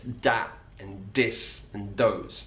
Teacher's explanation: The sound, the, can be replaced with a D.